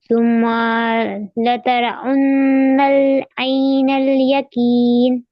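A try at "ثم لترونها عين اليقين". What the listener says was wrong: نہیں، پھر سے پڑھیے. کھینچنا نہیں ہے، لترا اننا نہیں، یہاں پر بھی واو کی آواز آئے گی.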